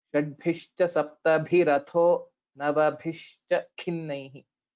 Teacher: in the last two padas, the Mahapranas are almost alternating.